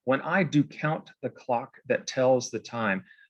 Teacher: So you probably remember from the presentation on acoustics that what Shakespeare was doing there with those the hard K sounds and the T sounds and that super regular meter of that iambic line is to suggest the ticking of a clock